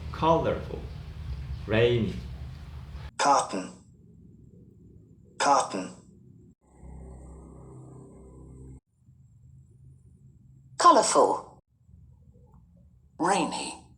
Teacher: you can listen that the location of the stress are in the first syllable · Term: word stress